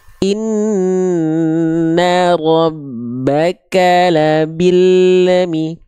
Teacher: Karena huruf lam sukun itu suka memantul karena lidah kita makhrajnya keburu lepas duluan.